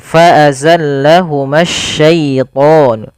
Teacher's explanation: bertemu dengan alif lam di sini dan alif lam syamsiyah ini ada alif lam yang kita tulis tapi tidak kita baca